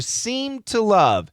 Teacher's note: the ED and the T are going to blend together. But the ED is there, okay?